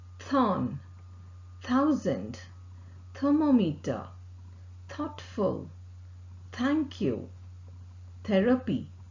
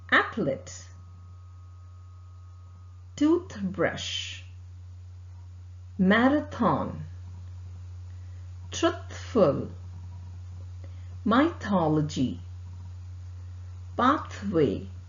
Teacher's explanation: the tip of the tongue close to the upper front teeth the air escapes between the upper front teeth and tip of the tongue vocal cord does not vibrate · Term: voiceless sound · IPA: θ